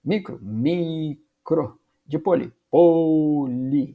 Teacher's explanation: a sílaba tônica está ali na primeira, em todos os casos.